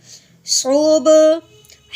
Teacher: ہی، نون قوف زبر ناق، دیکھیں قوف حرف قلقلہ میں سے، حرف قلقلہ کو ہلا کے پڑھیں گے کیونکہ اس کے اوپر جزم آ گئی ہے